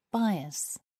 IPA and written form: ˈbaɪəs (bias)